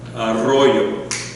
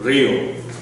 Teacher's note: it's a little trill at the front of the tongue